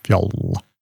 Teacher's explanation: in Old Norse, it's a short vowel and a long consonant